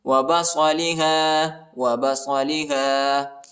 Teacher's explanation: صاد کو موٹا پڑھیں گے